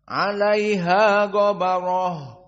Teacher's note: Maka qiraah Wars, 'alaiha ghabarah, ra-nya mufakhamah. Karena dalam keadaan fathah dan ba sebelumnya fathah